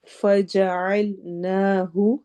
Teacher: فجعل عین حروف حلقی میں سے ہے، حلق تھروٹ کے درمیان سے ادا ہوگا